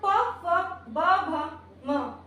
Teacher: इनका उच्चारण स्थान हो जाता है ओष्ठ, तो इनको ओष्ठ कहते हैं